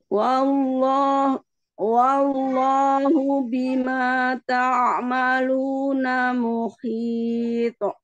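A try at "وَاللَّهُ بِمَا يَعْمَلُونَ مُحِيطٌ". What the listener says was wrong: Ya, maluna bukan ta'amaluna. Ya, malu. Tadi Ustazah bacanya ta'amaluna.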